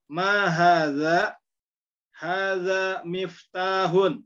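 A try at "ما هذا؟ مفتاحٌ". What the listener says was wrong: Iya, betul ya.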